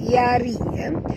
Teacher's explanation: ra ni ra tarqi, tipis, jangan tebal. Yari, jangan baca yari ya, tapi baca tipis.